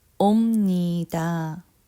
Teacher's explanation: And the reason is my mouth has to try to sound out the N sound, ni, so it's hard to make the B sound. So it actually ends up making the M sound.